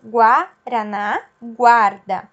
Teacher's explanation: O guá aqui tem o U que eu consigo ouvir, né? Eu pronuncio esse U, guá, guaraná, guarda, ok? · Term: U pronunciado